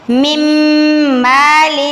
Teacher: ورحمتن، من مال، اس کو ہم نے من مال نہیں پڑھنا، میم کو میم کے ساتھ ملانا ہے اور آواز کو تھوڑی دیر ناک میں رکھنا ہے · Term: ادغام غنہ کے ساتھ